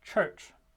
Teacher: they start with an alveolar stop and end with a palatal fricative. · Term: alveopalatal affricates